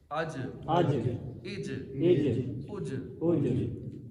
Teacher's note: اب یہاں آواز لوٹے گی کیونکہ جیم حروف کلکلہ ہے